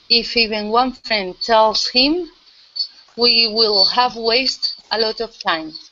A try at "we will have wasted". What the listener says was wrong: Really, really close. You're missing something at the end. Yeah, we will have wasted.